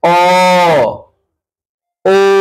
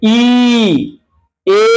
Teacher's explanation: ঠোঁট কখনো কুঞ্চিত হয়, যেমন আমরা বলছি দেখো অ, ও, রাউন্ড শেপ হয়ে যাচ্ছে, কুঞ্চিত হয়ে যাচ্ছে।